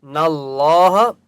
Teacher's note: لم، علم تعلم ان اللہ، حمزہ نون زبر ان، نون کے اوپر تشدید ہے اس لیے یہاں پر غنہ ہوگا۔ نہ اللہ، اللہ کا نام موٹا ہوگا کیونکہ اس سے پہلے نون کے اوپر زبر ہے